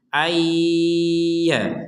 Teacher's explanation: kita masukkan nun sukun ini kepada huruf ya disertai dengungan menjadi ayya seperti itu.